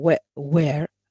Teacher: it's the central diphthong why because it ends with the central vowel